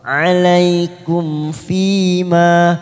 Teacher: fi kasrah bertemu ya sukun 2 harokat kita panjangkan